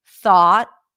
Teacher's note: remember that the T you can pop it at the end you can hold it at the end because it's a held T